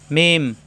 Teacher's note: মিম, 2 ঠোঁট থেকে উচ্চারণ,